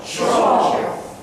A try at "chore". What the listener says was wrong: Chore. No, not shore, but chore. Chore. There's a little bit of a difference between shore and chore.